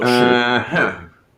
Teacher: So you start kind of in the middle, you go down and then up to the top. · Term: Falling and rising